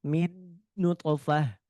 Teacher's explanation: nun sukun dan mim sudah pasti masuk hidung